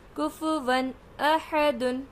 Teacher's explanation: تو یہاں پہ تنوین کی آواز کو ہم ظاہر کر رہے ہیں کیونکہ حمزہ زبر ہے۔